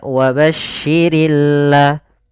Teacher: alif lam yang kita tulis tapi dia tidak terbaca dia sehingga langsung kepada huruf lam yang bertasydid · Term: alif lam syamsiyah